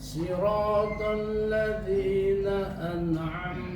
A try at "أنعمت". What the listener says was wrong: Masih kepantul, Pak. Makanya saya membawakan tahan satu harokat. Na'amta. Ditahan.